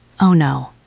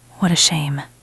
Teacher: Remember, your voice should go down a little. It should sound softer.